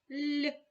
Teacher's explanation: дві букви Л позначають м'який подовжений приголосний звук ль